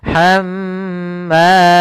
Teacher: ketika mim dan nun bertasydid itu kita tahan dulu. Kalau dia mim berarti tahannya kalau nun berarti tahan nnya maka hamma tidak langsung dilepas hammalatal hab tapi tahan dulu hamma ya. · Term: mim bertasydid